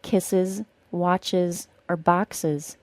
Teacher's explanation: when we add a syllable for the es ending that final s is always pronounced as a Z sound